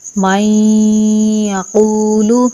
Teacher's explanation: تو نون ساکن کا یا میں ادغام ہوگا، اور ادغام ہوگا غنہ کے ساتھ، یعنی کہ نون کو یا میں داخل کر کے غنہ کے ساتھ پڑھیں گے